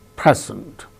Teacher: Present, the first syllable gains stress, present.